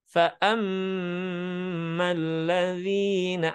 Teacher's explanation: Jadi kasih warna warna khusus jadi bukan kalau dihitung ini Kang nanti ada tips praktisnya dengan cara membukakan jari. Fa'am jadi mendengung di rongga hidung 2 ketukan. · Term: gunnah